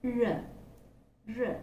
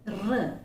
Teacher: it is a voiced post-alveolar frictionless phoneme and is produced when the tip of the tongue is raised in the direction of the back part of the teeth ridge. That's how the sound is made.